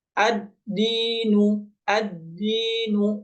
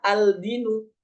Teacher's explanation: dianggap sebagaimana matahari yang tidak bisa terlihat ketika siang hari sehingga ketika kita baca lamnya sudah hilang langsung masuk kepada huruf setelahnya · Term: alif lam Syamsiah, alif lam syamsiyah